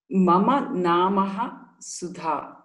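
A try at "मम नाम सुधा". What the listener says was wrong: Hold on. Mama nama. There is no visarga after nama.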